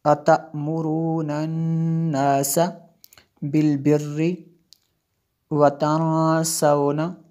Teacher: ہم نے نون مشدد ہے اس لیے یہاں پہ غنہ کیا